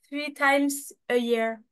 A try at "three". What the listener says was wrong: Three. Three. Alors, le TH comme ça, du three, tu vas mettre ta langue comme ça. Three. Three. En fait, on prononce pas le T.